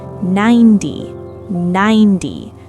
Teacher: The T sound melts into a D sound. It's not 90 T.